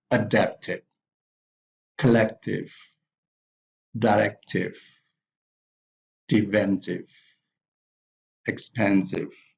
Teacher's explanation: here the stress is on the second syllables.